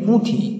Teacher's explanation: রাঢ়ী উপভাষার আবার একটি বৈশিষ্ট্য হল এখানে নাসিক্যী ভবনের একটু প্রাধান্য দেখা যায়। যেমনি পুঁথি, আমরা একটু চন্দ্রবিন্দু টেনে পুঁথি, পয় চন্দ্রবিন্দু রস্যু থয়রস্যি এরকম উচ্চারণ করে থাকি।